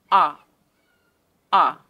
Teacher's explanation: the lips are in neutral position and the mouth is opened with the center of the tongue raised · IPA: /ʌ/